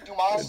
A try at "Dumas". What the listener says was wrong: The S is that's silent.